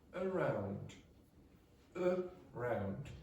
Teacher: one of the syllables is going to be stronger than the other. The round is stronger than the first part. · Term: word stress